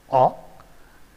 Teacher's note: It is a back open rounded vowel above the open position